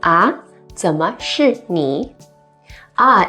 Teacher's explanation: ah in the second rising tone